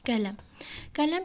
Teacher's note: iki dənə saitimiz var və ikisi də incə saitdir